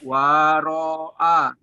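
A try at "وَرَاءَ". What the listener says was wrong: panjangnya di ro-nya, jangan di wa.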